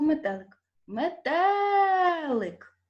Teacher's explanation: наголос падає на другий звук е на другий склад